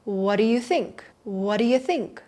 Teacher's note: Notice how I did not pronounce a T at the end of what